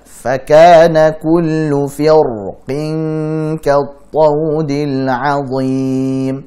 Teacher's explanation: Jadi alasan mereka kenapa dibaca tebal? Karena setelah ra sukun ada huruf isti'la, dan isti'la itu selalu tebal.